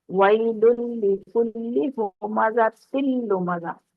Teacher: ویل، اب ویل لام کے اوپر تو پیش کی تنوین ہے، ویل آگے لام ہے تو پہلے والا لام مدغم ہو گیا آگے والے لام کے اندر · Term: ادغام